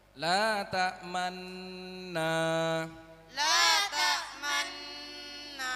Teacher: Bacaan ismam artinya bibir mencucu atau mencong di tengah-tengah dengung sebagai isyarat bunyi dhamma.